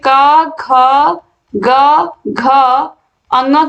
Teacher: पहले तीसरे और पांचवें वर्ण अल्प प्राण होते हैं दूसरे और चौथे महाप्राण होते हैं